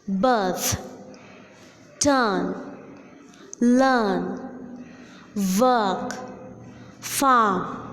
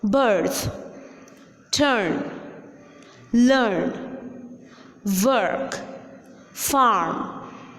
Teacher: In British English, the letter R in the middle position of a word is silent. That is, the sound R is dropped out while pronouncing the word.